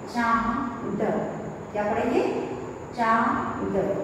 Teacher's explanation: अनुनासिक शब्द है, तो इसकी जो ध्वनि निकलेगी वो हमारे नाक से निकलेगी।